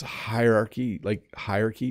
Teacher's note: it's almost becomes one syllable at the beginning